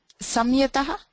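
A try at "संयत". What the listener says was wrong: Sanyata. Sanyata. Yeah, that's the pronunciation. You should never make it a makara because of why you have sam plus yataha, then you get the monuswaraha, and then anuswarasya parasavarna vapadantasya, right? So, but it will either be the anuswaraha or the yam. It will not be sam. So sanyataha. Sanyataha.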